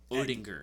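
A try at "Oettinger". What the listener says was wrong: It's Ettinger. Ettinger or Ettinger, but the O is silent.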